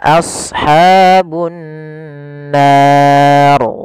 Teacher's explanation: Di sini ra-nya adalah ra tafkhim, ra yang harus dibaca tebal